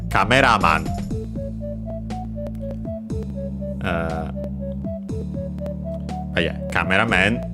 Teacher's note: in Japanese it's accented on the ra.